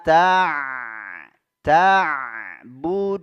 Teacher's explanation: huruf ainnya di tenggorokkan bagian tengah